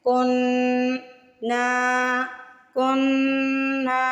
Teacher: یہ وہی والا رول ہے، سب سے پہلے نون پہ تشدید کی وجہ سے ناک میں آواز لے کے جائیں گے، غنہ کریں گے، غنہ مطلب ناک میں آواز لے کے جانا، تھوڑی دیر لگانا